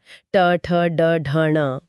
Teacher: यहां जीभ पीछे की तरफ मुड़कर यानी रोल बैक होकर मुंह की छत के कठोर हिस्से को छूती है जिसे मूर्धा कहते हैं। यह एक स्प्रिंग की तरह काम करता है जो ध्वनि में कड़कपन या कठोरता लाता है। · ट बोलते समय जीभ कैसे एक झटके से छत से टकराकर नीचे आती है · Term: मुरधन्य ध्वनियों, मूर्धन्य ध्वनियों